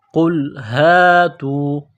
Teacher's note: قاف کو موٹا کرنا ہے، قاف لام پیش قل